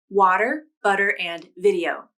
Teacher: this flap is also called the alveolar flap because the tongue tip lightly touches the alveolar ridge when you make this sound